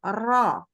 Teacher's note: ketika dia tafkhim nih pangkal lidah naik